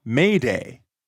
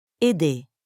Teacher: instead of that english a sound the french vowel is shorter